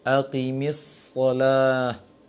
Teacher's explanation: safir, ada sifat tiupan suara seperti suara burung. jangan sampai hilang.